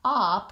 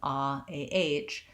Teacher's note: we have vowel ah, an open back vowel. So thinking of it as an ah, ah, might help you to say that correctly.